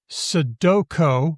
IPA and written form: sədoko (Sudoko)